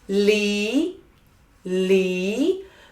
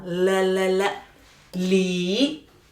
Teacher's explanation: Feel the airflow through the both sides of our tongue.